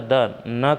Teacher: दंत मतलब दांतों से उसको उच्चारण करेंगे तो जीभ दांतों से टकराएगी